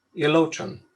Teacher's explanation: there's a little ooh that's in the middle of it that's just very slight